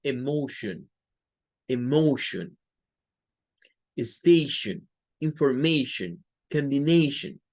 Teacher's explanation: En todas estas hay un schwa al final.